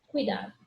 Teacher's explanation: Meu ditongo, UI. A minha vogal, U. Minha semivogal, I. Uma palavra trissílaba.